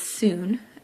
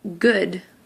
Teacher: However, they don't make the same sound necessarily. The double O can make either an oo sound like that, which is like a long U sound, or a shorter sound, but almost like a short U